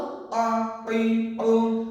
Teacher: কফ হলকের মাঝ হতে গলা চেপে আদায় হবে